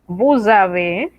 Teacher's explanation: esa zeta es una zeta que vibra una zeta que es sonora